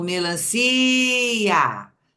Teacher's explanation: o i tem um som forte e o a é outro som forte ou seja eles não são pronunciados na mesma abertura de boca